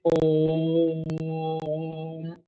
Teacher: स्वर जिसके उच्चारण में हस्व की अपेक्षा गुना समय लगता है हस्व की अपेक्षा तीन गुना समय लगता है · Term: प्लुत स्वर